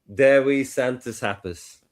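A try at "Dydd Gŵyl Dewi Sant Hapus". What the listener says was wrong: Not Santos.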